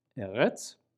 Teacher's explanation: Next is resh, and that makes an R sound. A lot of Israelis give the resh a sort of a French R sound. And we saw that in the word eretz, for land, aleph, resh, final tzali, eretz, land.